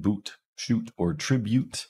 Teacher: this is our high back rounded tense vowel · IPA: [u]